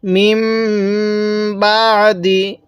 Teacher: নাকের বাঁশি দ্বারা গুনাহ করে পড়ব। কারণ মিম সাকিনের পরে বা থাকলে সেখানে আমাদের গুনাহ করতে হয়।